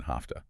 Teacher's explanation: the V to F unvoicing shift in hafta